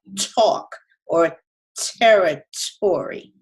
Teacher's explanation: I can also feel perhaps just a little bit of a bump towards the back of the throat and up at the top of my mouth, right around the back of the throat when you say T. But the tongue is kind of spread out along the roof of the mouth when we go talk or territory. However, when we say the Spanish te, you end up curling your tongue.